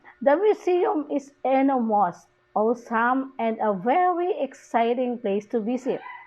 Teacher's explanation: Where is the extra high there? High pitch there? It is in the very. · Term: extra high pitch